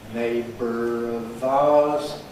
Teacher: schwa /ə/ + /r/ in [ˈneɪbər] can give you a ‘syllabic r’ [r̩] by ‘syllabic consonant formation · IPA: [ˈneɪbr̩ əv ₒaʊəz]